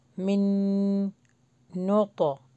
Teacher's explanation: نون ہے نا جزم کے ساتھ وہ اسکپ ہو جائے گا میم نون سے ملے گا اور پھر غنہ ہوگا